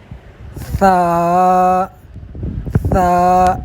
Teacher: ثا میں سیٹی کی آواز نہیں نکلنی، سین سین کی آواز اس میں نہیں نکلنی ہے